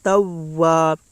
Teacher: الف سے پہلے زبر ہے، اس لیے الف مدہ ہوگا، الف مدہ کو ایک الف کے برابر کھینچ کر پڑھیں۔